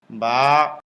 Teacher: আলিফ উপরের দাঁতের আগা নিচের ঠোঁটের পেটে লাগবে, এক ঠোঁট আরেক ঠোঁটের সাথে লাগবে না। আলিফ বা স্বাভাবিক অবস্থায় মুখ যেমন ঠোঁট দুইটা মিলে থাকে, মিলানো ঠোঁট খুলে দিলেই হয়ে যায়